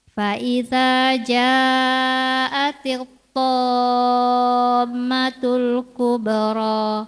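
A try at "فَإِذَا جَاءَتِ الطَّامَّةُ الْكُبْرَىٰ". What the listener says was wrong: Ada mim bertasydid, gunahnya disebutkan.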